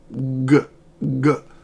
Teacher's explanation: your back of your tongue is raised when it touches the soft pallet all the way in the back of your mouth. So after you make that contact, then you release the sound.